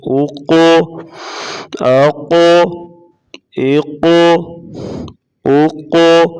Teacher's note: قاف کو پور پڑھا جائے گا یعنی موٹا پڑھا جائے گا اور اس کے اوپر قلقلہ کیا جائے گا